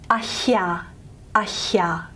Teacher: a glottal H plus y